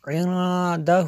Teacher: شہادتاً عندہ، یہاں پہ بھی اخفا ہوگا، عندہ، نون ساکن کے بعد دال حروف اخفا میں سے ہے۔